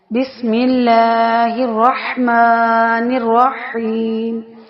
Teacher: اب دیکھیں ملا کھینچ کر پڑھنے اور نرم یعنی باریک پڑھنا ہے۔ رح نرمی سے پڑھا جانے والا ہے وسط حلق سے، اور نرحیم یا مدہ بن رہا ہے۔